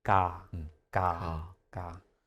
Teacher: I hear it sounds like sometimes K sometimes G